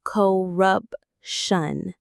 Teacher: The stress is right in the middle.